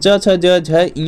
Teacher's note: पूरा च वर्ग का उच्चारण स्थान तालु होता है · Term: तालव्य